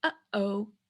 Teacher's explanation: We call this a glottal stop, and it's like the space between uh-oh